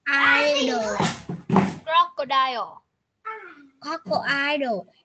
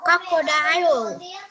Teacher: nhớ nha, không phải là âm ơ mà là âm ô nha.